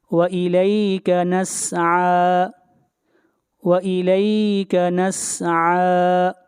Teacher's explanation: عین کو کھینچ کر پڑھیں گے ایک الف کے برابر